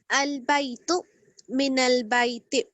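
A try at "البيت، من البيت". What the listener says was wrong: آپ آخر میں جھٹکا نہ دیں. البیتو اور من البیتی.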